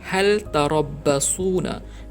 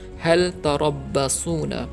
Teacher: Izhar makna jelas, hal, lam tu disebut dengan jelas, hal tarabbasuna.